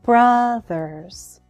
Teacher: Brothers has 2 syllables. The first one is stressed.